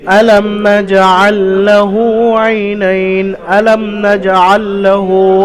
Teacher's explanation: মিম সাকিনের পরে নুন এসছে বা এবং মিম ছাড়া নুন এসছে মিম সাকিনকে বিনা গুন্নায় তাড়াতাড়ি জাহির করে পড়তে হবে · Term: ইজহারে সাফাবি